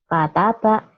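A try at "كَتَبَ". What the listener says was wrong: Kaknya ibu belum kayak H ya. Kakak, kiki, kuku, kakiku. Kataba.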